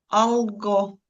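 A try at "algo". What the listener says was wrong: Ель, не забуваємо пом'якшувати.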